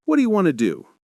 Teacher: what do you became whatcha, and want to became wanna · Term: weak forms